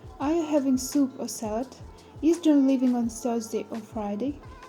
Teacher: The combination is called rise-fall or fall-rise intonation. Rise-fall intonation, the intonation rises and then falls. We use rise-fall intonation for choices, lists, unfinished thoughts, and conditional sentences.